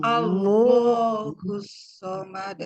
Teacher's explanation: ketika menebalkan lafaz Allah itu, pangkal lidah kita mengangkat ya. Jadi ketika menebalkan pangkal lidah kita mengangkat ke langit-langit seperti halnya huruf-huruf isti'la gitu ya.